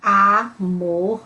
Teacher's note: é bem aberto o A